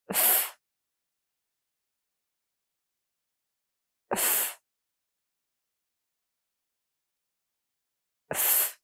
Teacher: It's voiceless. You are not going to use your voice. No vibration in your throat. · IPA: /f/